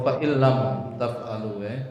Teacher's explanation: Mim mati bertemu tak dibaca idhar atau jelas.